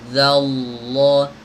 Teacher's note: Zallah, za tipis, lamnya tebal.